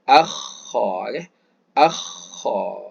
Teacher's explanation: ketika kita sebut huruf Kha ini dia seakan-akan berlaga sedikit e dia mengenai tekak kita seakan-akan macam nak buang kahaklah kata orang Melayu kan tapi bersifat keluar anginnya akha oke akha